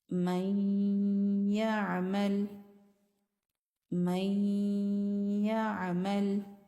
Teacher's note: یہاں پر نون کی آواز ناک کے بانسے سے آتی ہے، اس کے بعد یا میں مدغم ہو جاتی ہے، اس کو ادغام ناقص کہتے ہیں۔